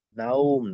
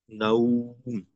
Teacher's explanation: ওয়াও যখন মাদ্দে লিন হিসেবে হয়, তখন ওয়াও এর উচ্চারণটা ও এর মতো না হয়ে উ এর মতো হয়, দীর্ঘ উ এর মতো হয়। তো এখানে উচ্চারণটা হবে নাও, নাওম না, উচ্চারণটা হবে নাউম, এমন হবে।